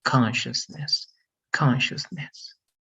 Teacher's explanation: S and C together is going to be more like sh